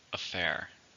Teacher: How many syllables are in affair? 2. Stress on the second.